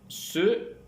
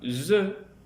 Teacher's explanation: Dans le cas de ces deux constructifs, il y a un resserrement du passage de l'air au niveau des alvéoles, avec la pointe de la langue en bas, aussi appelle-t-on ces deux constructifs des constructifs alvéolaires. La consonne se est sourde, tandis que la consonne ze est sonore.